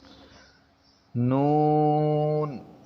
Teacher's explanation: جب زبان اگلے اوپر والے دانتوں کے مسوڑوں سے ملے تو یہ لفظ ادا ہوتا ہے